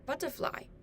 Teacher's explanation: the but in butterfly sounds louder